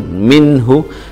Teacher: idhar halqi, nun sukun bertemu ha